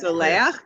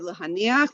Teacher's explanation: it'll be ach at the end and the accent will come on the syllable before the end